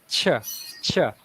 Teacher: there's actually some kind of friction at the front of our mouth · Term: CH sound